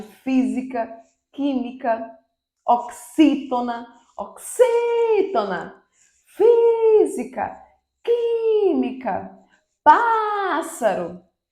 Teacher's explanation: pássaro é a antepenúltima sílaba tônica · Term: proparoxítona